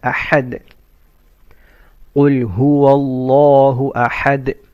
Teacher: You make a qalqala on that. You make a little bouncing sound on the dal.